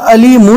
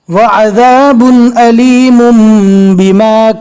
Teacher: جزم والے نون اور تنوین کے بعد با آوے تو جزم والے نون اور تنوین کو میم سے بدل کر پڑھیں گے